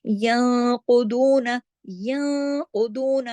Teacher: नून साकिन के बाद कॉफ आया तो मोटा इख्फा यहाँ पे होगा